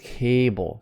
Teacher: Stressed syllable A. Bull is unstressed, so it's very, very short and maybe hard to hear.